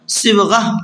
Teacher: تو گولتا کا قاعدہ یہ ہے کہ گولتا پر جب وقف کرتے ہیں تو وہ ہا بن جاتی ہے